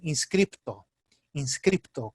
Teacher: na Argentina, no espanhol argentino, eles dizem inscripto, inscripto, com P. Nós, na Venezuela, dizemos inscrito, sem P, e não escrevemos.